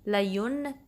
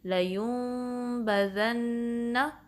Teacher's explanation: نون کی ساؤنڈ نہیں آئے گی بلکہ انسٹیڈ میم کی آئے گی، لیونبذن. تو یہ بیسکلی اقلاب ہے.